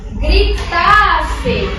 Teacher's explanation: a última sílaba tônica dessa palavra é o tá